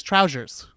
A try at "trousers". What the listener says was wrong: Okay, you're trying to put an H and an I in there. Trousers. How you're saying is trousers.